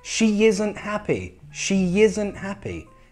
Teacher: E, I. How would we join that? We'd have to put a Y sound.